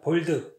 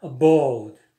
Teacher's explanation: 근데 미국인 bold 그러면 성대가 많이 울려요. 그리고 배에서 밀어 올리는 소리가 많이 올라와요. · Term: 공명음